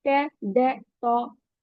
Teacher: इसमें हम टंग की टिप को अपर फ्रंट टीथ के रूट से टच करते हैं